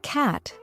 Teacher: the word cat has a broader A sound compared to British English